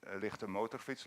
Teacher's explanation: As for instance, here is written lichte motorfiets, light motorcycle, where it is a throat R, a uvula trill, going up and down in frequency